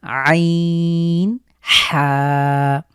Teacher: আমরা কন্ঠের মাঝখান থেকে চাপ দিয়ে হলকের মাঝখান থেকে উচ্চারিত হবে